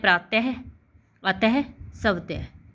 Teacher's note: हम जैसे बोलते हैं प्रातः, अतः, स्वतः। ठीक है, तो ह के साथ इसका उच्चारण किया जाता है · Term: विसर्ग